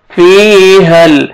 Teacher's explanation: یا ساکن سے پہلے کسر ہے، زیر ہے، آپ نے فا کو کھینچنا ہے ایک الف کے برابر